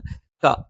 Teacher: നാവിന്റെ ആരംഭം മേലെ അണ്ണാക്കിലാണ്